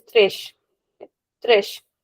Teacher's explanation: whenever the letter S comes at the end of the word, then the sound is very soft. It is sh. So we'll never say tres.